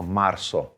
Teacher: when we have a z in spanish a lot of times it's really going to sound a little bit more like an s in pronunciation